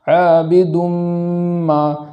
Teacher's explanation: اس ادغام کے اندر گنہ کریں گے اور اس گنہ کو ایک الف کے برابر تاخیر کرتے ہوئے پڑھیں گے